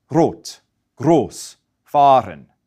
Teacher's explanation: in Austria, they generally don't use the back of the throat R. Instead, they use what we call the tip of the tongue r